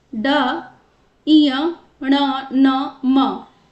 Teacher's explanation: ये नासिका से बोले जाते हैं। इसीलिए इनका उच्चारण स्थान नाक यानी कि नासिका है।